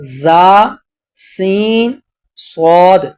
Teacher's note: ان 29 حروف میں سے 3 حروف ایسے ہیں کہ جن کو ادا کرتے وقت آواز میں سیٹی پیدا ہوتی ہے، جیسا کہ زا، سین، صاد۔ ان حروف کو ادا کرتے وقت سیٹی پیدا ہوتی ہے، تو اس وجہ سے ان حروف کو حروف صفیریہ کہا جاتا ہے۔